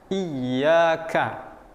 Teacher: Kita harus baca i. Nah, di sini ada ya bertasdid. Nah, ya bertasdid ini maka kita akan tekan sedikit. Iyyaka.